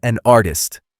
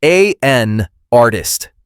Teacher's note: The N in an moves to the start of artist. It sounds like A-N artist.